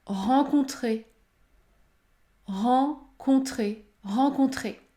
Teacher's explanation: vous lorsque vous avez les lettres e n devant une console il ne faut pas prononcer le N il faut uniquement prononcer la voyelle nasale en